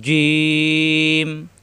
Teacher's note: জিম নিচে নক্তা, জিহ্বার মাঝখানে উপরে তালুতে লাগবে।